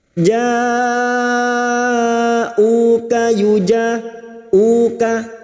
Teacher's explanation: Ciri-cirinya hamzah kecil seperti ini, namanya mad wajib mutasil. Bertemu mad dengan hamzah dalam satu kalimah 5 harakat kita panjangkan.